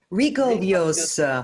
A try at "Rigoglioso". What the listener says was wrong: The second G is silent.